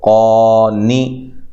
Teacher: لہذا قاف کو یہاں لمبا کرنا ہے، نون کو لمبا نہیں کرنا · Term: کھڑی زبر